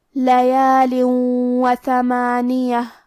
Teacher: واو حروف الادغام میں سے ہے اور ادغام کا معنی ہے حرف کو حرف میں داخل کرنا، تو ہم یہ تنوین کو واو میں ملا کے غنہ اور تشدید کے ساتھ یہ حکم کو ادا کریں گے